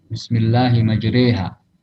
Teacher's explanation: Yang terakhir, kalau Anda tidak salah, tentang imalah, bacaan yang miring antara fathah dan kasrah